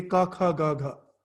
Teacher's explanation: The root of your tongue is touching the palate for the ka varga.